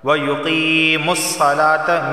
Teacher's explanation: میم کو صاد سے ملائیں گے